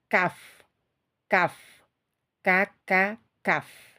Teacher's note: Pangkal lidah bertemu dengan langit-langit yang lunak dan keras. Jadi antara lunak dan keras, ya, ini.